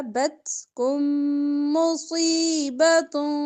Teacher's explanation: میم ساکن کے بعد میم ادغام کریں گے غنے کے ساتھ